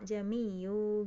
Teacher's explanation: Tahqiq itu artinya membaca dengan biasa, dibaca dengan a gitu ya. Hamzahnya dibaca biasa ya, bukan ditashil